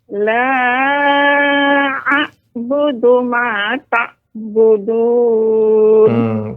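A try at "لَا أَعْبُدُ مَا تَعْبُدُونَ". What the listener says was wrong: Pada ain di situ ada aliran sedikit suaranya Nek. Ta. Kalau tidak dialirkan nanti dia akan mirip dengan huruf a, tak budu.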